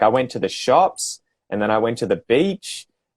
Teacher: they'll lift the last word that they're saying · so you have to learn the up up up up down kind of pattern